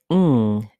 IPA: ŋ